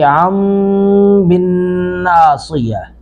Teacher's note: یہ عن ہے، اس کے بعد بن ناصیہ با ہے تو نون تنوین کو میم سے بدلیں گے جس طرح ہم نے نون ساکن کو میم سے بدلا تھا۔